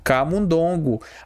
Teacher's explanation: Só que isso aqui não é oxítona. Isso aqui, a sílaba forte é a penúltima. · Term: paroxítona